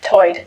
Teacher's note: Lumbee English speakers share vowel sounds present in the Outer Banks accent, where tide is pronounced toid.